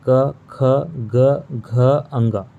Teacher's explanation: इन 5 वर्णों का उच्चारण जो है ये कंठ से होता है। आप बोल करके भी इसको फील कर सकते हैं, क, ख, ग, घ, अंग।